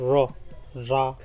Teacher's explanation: ये जबान की नोक को ऊपर के तालू से टच करने पर अदा होता है